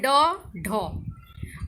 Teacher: उत्क्षिप्त व्यंजन, उसमें क्या है, जैसे जीभ का अगला भाग थोड़ा ऊपर उठाकर झटके से नीचे फेंकते हैं